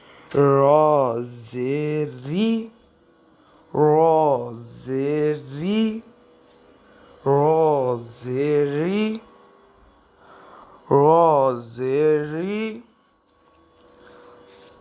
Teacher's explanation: اب ایک امپورٹنٹ حرف را۔ را تو ہے موٹا الفاظ، لیکن جب اس کے نیچے زیر آ جائے گی یہ بھی باریک ہو جائے گا۔